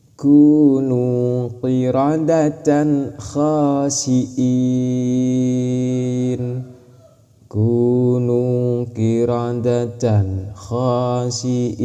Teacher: Tanwinnya harus jelas, kha-nya harus jelas. Ketika tanwin mau masuk ke kha harus jelas, bukan samar ataupun dengung. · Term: idhar